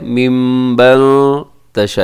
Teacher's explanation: नून साकिन के बाद ता इख्फा है